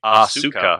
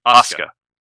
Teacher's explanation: They completely drop the U in the center.